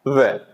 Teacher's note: ऊपर के जो दांत है वो और नीचे का होठ आपस में मिलता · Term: दंतोष्ठ